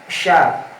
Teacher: Sya itu shin adalah sifatnya tafasyi. Tipis. Ya. Tafasyi artinya tafasyi itu berhembus.